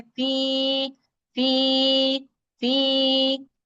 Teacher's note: क्योंकि या साकिन है, उससे पहले जेर है, तो ये दो हरकत तक अपनी आवाज को लंबा करता है। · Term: या मद्दा